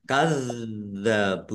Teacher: dalalnya ada tasdidnya dibaca dobel ditekan biar tampak dobelnya · wawu sukun mad thobi'i panjang dua harakat